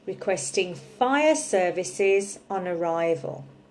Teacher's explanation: I'm not actually stressing fire services, just fire. Okay, if I said requesting fire services on arrival, it would sound unnatural, like I'm shouting.